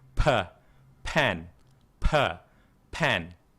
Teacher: Tapi kalau bahasa Inggris itu memang ada sedikit tekanan di mulut. Ada udara lah, tekanan udara tambahan gitu.